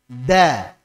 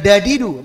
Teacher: Bukan dadidu, tapi da, di, du. Hampir mirip sama dalnya orang Jawa, tapi tanpa hamas. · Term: dal Arabiyah